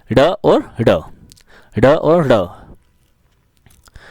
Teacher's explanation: जिन ध्वनियों के उच्चारण में जीभ झटके से ऊपर नीचे होती है उन्हें उत्सृप्त व्यंजन कहते हैं।